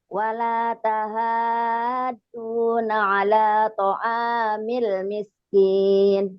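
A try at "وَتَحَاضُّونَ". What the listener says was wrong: Kurang, itu lazim, mad lazimnya kurang. Lazim musaqqal kalimi. Wala tahaduna ya.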